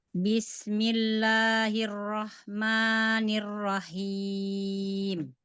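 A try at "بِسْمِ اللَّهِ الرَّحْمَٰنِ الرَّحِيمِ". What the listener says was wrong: Panjangan lagi huruf ma-nya. Bismillahirrahmanirrahim.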